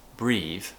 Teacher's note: almost sounds a bit like an unvoiced th sound but i am just slightly using my voice and that's what makes it different